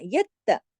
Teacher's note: ता को सख्ती से पढ़ना है, ढीला ढाला नहीं, ता दो दफा पढ़ा जाएगा